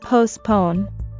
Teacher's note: usually the T in the word is silent which means we won't pronounce it and we also stress the second syllable